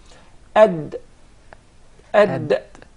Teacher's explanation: Ad is from just behind the teeth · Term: Dal